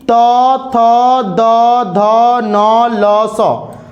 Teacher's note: त का उच्चारण करिएगा तो बीच में जीभ जो होता है दोनों दांत के बीच में फंसता है